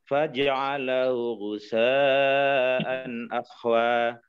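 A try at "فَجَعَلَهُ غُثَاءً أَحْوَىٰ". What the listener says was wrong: Coba faja bukan faja, faja, faja, faja di fathah. Faja'alahu ghusaan ahwa.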